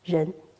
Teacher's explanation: in Chinese pronunciation, ren, the rising tone